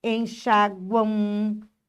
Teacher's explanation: Aí você vai dizer: "Epa, cadê o U? Olha o M com som de U aqui. É como se eu dissesse assim, ó, enxaguão com u aqui, ó. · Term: tritongo fonético